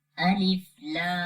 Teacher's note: And the lam has a mud sign, we long it. 3 seconds almost.